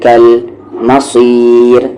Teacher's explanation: یہاں پر را لائٹ، مصیر کیونکہ را کی ساؤنڈ نیچے جا رہی ہے